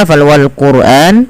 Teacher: wal quran rnya dibaca dengan tebal ya wal qurani karena apa kenapa ro dibaca dengan tebal tidak dibaca wal qur tapi wal quran karena ada huruf ra sukun yang didahului dengan huruf dammaah maka ia wajib dibaca dengan bacaan tebal